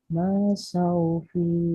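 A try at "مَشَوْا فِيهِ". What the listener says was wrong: Ma-nya nggak panjang.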